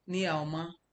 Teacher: the ma at the end of that thing that makes it a question doesn't have a tone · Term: neutral tone